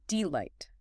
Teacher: It's one unstressed syllable followed by one stressed syllable. It's probably the most natural common rhythm in spoken English.